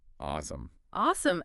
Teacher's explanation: The stress is on the first part, awesome.